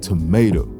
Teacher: the word tomato has a stress pattern of unstressed stressed unstressed